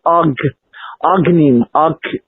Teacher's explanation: So the creation is actually a collapsing of the infinite, eternal, unbounded, unmanifest self into a point of expression, which is then described by the next consonant called G. And the G collapses the entire mouth and the entire back of the throat into a completely closed condition.